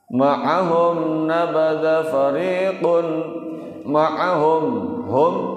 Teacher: mim sukun atau mim mati ketemu dengan nun, idhar syafawi. Ya bacanya jelas tuh.